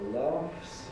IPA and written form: lɑːfs (laughs)